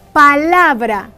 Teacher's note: La sílaba tónica de esta palabra es la, porque en ella se hace más fuerza al pronunciarse dicha palabra, la. Las demás sílabas son sílabas átonas, sílabas átona.